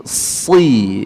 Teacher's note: huruf sin keluar daripada ujung lidah kita bertemu dengan halaman gigi seri bawah kita